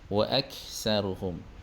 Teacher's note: pada huruf kaf dia ada sedikit angin